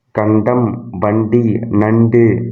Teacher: நாவின் நுனி மேல்வாய் அன்னத்தின் நடுப்பகுதியை தொடுவதால் நகரம் பிறக்கிறது. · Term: 3 சுழினா